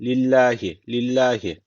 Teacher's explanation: Allah lafzına alttan giriş yapıldığı için bu Allah lafzı ince okunacak